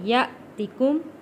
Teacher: حمزہ کے اوپر جزم ہے، جھٹکا دے کے پڑھیں گے